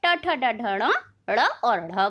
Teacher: जीभ का अगला हिस्सा तालु के अगले हिस्से जिसे मूर्धा कहा जाता है उससे स्पर्श करते हैं तो मूर्धन्य ट ठ ड ढ ण ड़ और ढ़ बनते हैं।